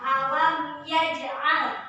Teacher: hukum bacaannya yaitu Idhar Syafawi juga, yaitu mim bertemu dengan ya, dibaca jelas